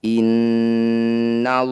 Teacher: Cara bacanya bunyi nun dengungkan 2 harokat, tahan 2 ketukan. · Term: gunnah musyaddadah